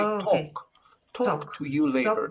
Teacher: later talk to you later okay when you say talk talk don't pronounce the l sound